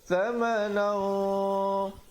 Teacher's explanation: ikhfa di situ menjadi tebal kerana qaf sifatnya isti'la